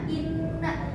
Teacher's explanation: Selanjutnya ada nun gunah inna itu dibacanya dengung dan ditahan 2 harokat